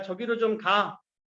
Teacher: 원래는 가, 아라고 하는 명령형 어미가 붙었는데 소리가 아와 아가 같으니까 얘가 하나 탈락하는 현상. 이거를 모음 탈락, 동음 탈락이라고 얘기를 합니다.